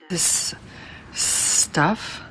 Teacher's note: She connects the s of this with the s of stuff.